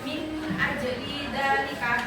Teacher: min dan nun sukun ini kan ketemu hamzah, jadi dia dibacanya jelas min ajli dalika. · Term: izhar halki